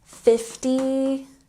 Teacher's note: the emphasis on the first syllable